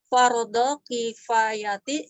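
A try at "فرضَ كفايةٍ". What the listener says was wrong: Tanwinkan kifayatin.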